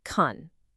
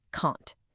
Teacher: The positive can is weak and quick. It sounds like kun. It almost disappears. But the negative can't is strong, long, and stressed, can't.